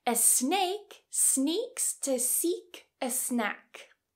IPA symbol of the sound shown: s